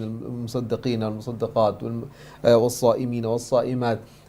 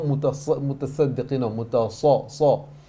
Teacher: And the surah that you just recited, there's the ayah that you recited, there's laws of Sad in al-musaddiqeen, al-musaddaqat, wal-sa'imin, wal-sa'imat, and the rest of the words that have a Sad. Make sure that the Sad is full mouth, not mutasaddiqeen or mutasa.